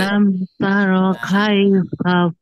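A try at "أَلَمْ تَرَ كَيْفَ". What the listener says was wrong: Nah, jadi jangan dibaca kei. Nah, tapi dibacanya kai. Kai. Alam taro kaifa fa'ala rabbuka bi'ad.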